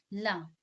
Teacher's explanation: सांस जो हमारा है वो जीवा के बगल से निकल रही है ना, तो वही हमारा क्या कहलाता है, पार्श्विक व्यंजन कहलाता है।